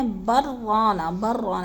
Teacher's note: وقفہ بھی نہ کرنا، سکتہ بھی نہ کرنا اور سانس بھی بغیر توڑے بلکہ را کے اوپر شد کر کے پڑھ جانا